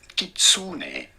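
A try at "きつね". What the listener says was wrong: Probably this is the worst so far. Not only got the pitch accent wrong, but he also put a stress that is not there and made the vowel longer. So double mistake. He says kitsune.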